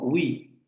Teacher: no es una G porque hay que redondear los labios, y tampoco la parte posterior de la lengua se acerca tanto al velo como para producir una oui, porque si lo pronunciamos con G sería oui. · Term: semiconsonante